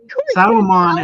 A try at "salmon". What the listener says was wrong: The L is silent.